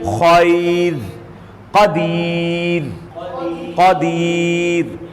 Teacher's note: قا حروف مستعلیہ موٹا ہے، بعد میں باریک.